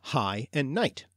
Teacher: In some cases, such as when following a front vowel, the guttural sound of gh just disappeared, as in high and night